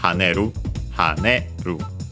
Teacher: It's a reminder, so low, high, low.